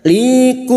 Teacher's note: mim sukun bertemu hamzah idhar safawi mim sukun dibaca jelas tanpa mendengung